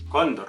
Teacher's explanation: El acento está en la penúltima sílaba.